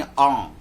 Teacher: यानी कंठ से बोलेंगे और नाक उसमें शामिल कर देंगे